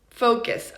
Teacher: the short U sound does sound like the schwa. The only difference is that the schwa is even shorter. It's not very long in time.